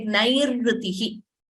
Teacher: the first r you hear there is the repha